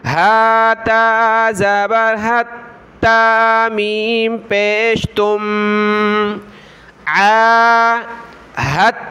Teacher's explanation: تو یہ پہلا حرف دال ساکن ہے، تا مشدد ہے، تو دال کو ہم چھوڑ دیں گے، ہا کو تا کے ساتھ ملائیں گے